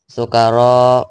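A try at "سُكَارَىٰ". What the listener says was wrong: Sukaro bukan sukaro. K-nya juga panjangnya K dengan ro sama. Dua-duanya K dan ro itu adalah mat tobi'i atau mat asli.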